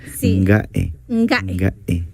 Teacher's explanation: Y después de la A lleva una glotal.